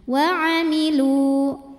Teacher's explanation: du hukumnya adalah Mad thi'i karena wau ini adalah wau Mad wau Mad atau wau sukun didahului damah panjang dua harakat jika berhenti wailu namun kalau wasal Jadi pendek Karena wau ini